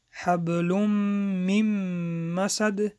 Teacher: ادغام با غنه، حرف میم را از دماغ می خوانیم